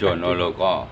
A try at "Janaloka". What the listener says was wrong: Janaloka. Bukan Jono, Mbak, Jana. Kalau di Indonesia kan Janaloka.